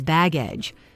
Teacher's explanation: Both words mean the same thing, but they have different pronunciations. Baggage is baggage with stress on the first syllable